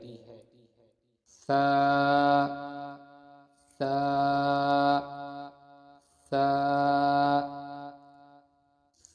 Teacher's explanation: تا تا تا تا کے مخرج کی ادائیگی زبان کی نوک اور اوپر کے دانتوں کی جڑ سے ہوتی ہے۔ ثا ثا ثا ثا کے مخرج کی ادائیگی زبان کا سر اور اوپر کے دانتوں کے اندرونی کنارے سے ہوتی ہے